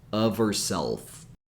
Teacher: h f so if you're connect connecting of with herself and eliminating the H sound remember to connect with the V sound